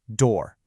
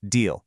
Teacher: Do you physically feel how your lips round pretty aggressively when you hit that D? That's because your mouth is subconsciously preparing for the rounded O vowel coming up next.